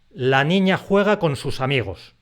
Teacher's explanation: solamente 3 de esas palabras reciben un golpe de voz al hablar. Las otras 3 se tienen que apoyar en la palabra siguiente para pronunciarse.